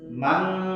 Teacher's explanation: Kalau nun mati bertemu dengan huruf k atau ko, maka bunyinya eng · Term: ikhfa hakiki